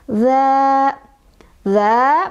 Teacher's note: Dibacanya dipanjangkan sebanyak 2 ketukan. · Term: mad thobii